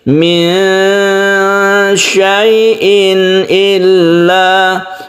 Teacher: tanwin bertemu dengan hamzah ini disebut izhar halqi, karena hamzah itu sendiri itu makhrajnya di tenggorokan. Tenggorokan itu disebut al-halaq atau halqi, ya.